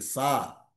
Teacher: ఈ సకారం దంతాల నుంచి వస్తుంది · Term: దాంత్యం